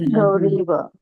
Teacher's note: गौरी मध्ये दीर्घ ई आहे त्याच्यामध्ये रस्वई मिसळला तर काय झाला दीर्घ ई झाला